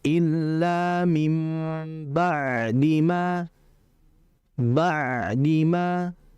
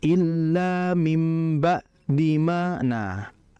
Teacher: Dalam membaca ain. Ain ini kalau sukun dia itu harus dibaca mengalir sama seperti lam mati.